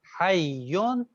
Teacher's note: ایک جی ساکن تھا اور ایک متحرک تھا، لہذا جی اس ساکن کو ہم نے متحرک والے حرف میں ملا دیا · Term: ادغام مثلین